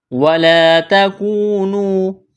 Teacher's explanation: وَلَا الف مدہ ہے، ایک الف کے برابر کھینچنا ہے